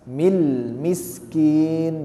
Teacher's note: jangan ada pantulan di huruf lamnya